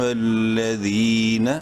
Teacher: یا ایوہ لام زبر لا، ذال یا زر ذی، یا مدہ ہے، ذال کو ایک الف کے برابر لمبا کریں گے، نون زبرنا۔